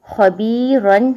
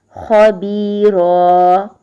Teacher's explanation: ایک زبر کو ختم کریں گے اور دوسری جو زبر ہوگی اس کو الف کے ساتھ لمبا کر کے پڑھیں گے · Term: 2 زبر پر وقف